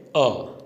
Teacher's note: मध्य स्वर है वो जीवा के मध्य भाग से उच्चारित होता है, वह है अ। एक ही स्वर है वो मध्य स्वर है।